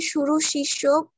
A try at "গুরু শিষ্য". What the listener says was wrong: শুরু না, গুরু শিষ্য, গুরু শিষ্য মানে ওস্তাদ আর সাগরেদ, ওস্তাদ আর সাগরেদ, ঠিক আছে?